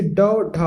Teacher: इन व्यंजनों का उच्चारण करते समय हमारी जो जीभ होती है वो पहले उठकर मूर्धा का स्पर्श करती है। ठीक, फिर झटके के साथ नीचे आती है